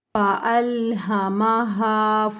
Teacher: فألہمہا دونوں ہاں بھاری ہیں، سینے سے ادا ہوں گی، اس کو نہیں کھینچنا، اس کو کھینچنا کیونکہ یہ حروف مد ہے۔